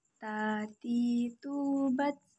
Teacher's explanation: Perhatikan tati, tubat. Perhatikan ada udara yang mengalir ketika melafalkan huruf ta.